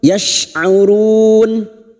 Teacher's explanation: huruf shin makhrajnya ada pada wastul lisan, yaitu tengah lidah, sama dengan makhrajnya huruf jim dan ya.